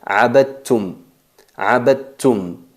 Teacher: no se percibe el sonido del dal · fusionamos el dal y la ta, salen del mismo lugar, del mismo punto de articulación, pero tienen diferentes características y se pronuncia abadtum.